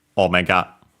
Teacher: It's more similar to how it's written even though it's still similar to English that way. Omega accent on the first syllable. So high, low, low.